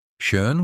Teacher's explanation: say E, but round your lips like you're whistling.